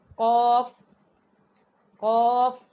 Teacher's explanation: زبان کی جڑ اور تالو کے نرم حصے سے قوف ادا ہوتا ہے۔ · قوف جو ہے یہ موٹا پڑھا جانے والا حروف ہے، اسے باریک نہیں پڑھا جاتا